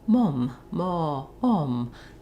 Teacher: If you're saying mom in English, you don't want any rounding. If you're using a British accent, you're going to have some rounding there. · if British are saying, for example, mom, ma, om, they have a little bit more lip rounding. I believe it's further back in the throat, where the resonance happens.